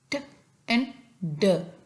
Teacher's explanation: Alveolar plosive तब बनता है जब हमारी टंग की टिप या टंग से थोड़ा सा जो पिछला हिस्सा है ब्लेड वो हमारा टच करता है एल्व्यूलर रिज को। एल्व्यूलर रिज कौन सा पार्ट होता है, जो अपर टीथ के बिल्कुल पीछे वाला हिस्सा जो होता है उसको हम कहते हैं एल्व्यूलर रिज।